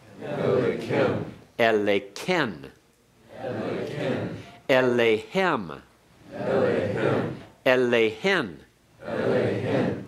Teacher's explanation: the accent is on the heavy pronominal suffix, kem, ken, hem, and hen are heavy. So the accent stays with them. Therefore, that makes the aleph the third back from the accent.